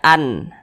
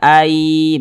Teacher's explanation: Jangan dibaca an tapi kita baca Ai begitu kemudian diengungkan atau digunahkan jadi suaranya itu kita tahan kita panjangkan sejenak ayutim kita tahan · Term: idgham bhunnah